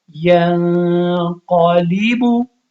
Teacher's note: یہ با ہے لیکن اس پہ اب قلقلہ نہیں ہے کیونکہ یہ متحرک ہے